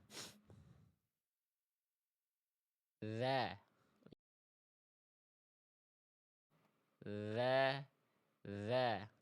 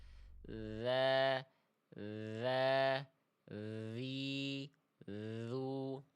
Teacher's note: Jadi ujung lidah kita sentuhkan ke ujung gigi seri atas kita dialirkan suaranya. Dza tuh ketika ujung lidahnya nempel ke ujung gigi seri atas suaranya mengalir. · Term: makhraj huruf dalal